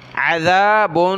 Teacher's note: ذال پر زبان نکالیں، عین کو گلے سے نکالا. عذاب، با کے اوپر دو پیش تنوین کلرفل ہے، ناک میں آواز پیدا کریں گے.